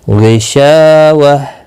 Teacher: وقف کی صورت میں ہا ساکن پڑھا جائے گا